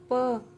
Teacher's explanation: देखो प बोलेंगे तो होठ पूरे हो रहे हैं